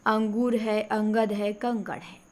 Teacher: अंगद, कंकड़, नाक से निकलेगी। तो अनुस्वार की ध्वनि नाक से निकलती है